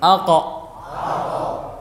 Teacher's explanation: Perhatikan huruf qaf yang dia isti'la juga, namun infitah, tidak itbaq. Jadi perhatikan pangkal lidahnya meninggi, suara menjadi tebal, sifatnya isti'la, tapi bagian depan mulut dia terbuka lebar.